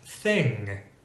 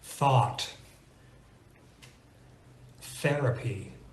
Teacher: so as you can see there we use the non-vocalized th